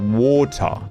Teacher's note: where the T is pronounced, but now the R is not